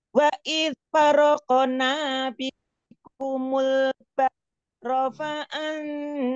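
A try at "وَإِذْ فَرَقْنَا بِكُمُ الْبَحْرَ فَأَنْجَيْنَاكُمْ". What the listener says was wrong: Wa anjaynakum, nakum, nanya panjang.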